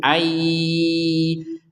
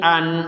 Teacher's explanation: Yang awalnya an, kita akan membacanya dengan ai, seperti itu. Ai kemudian dengung, ayyu, jadi dengung, baru yu.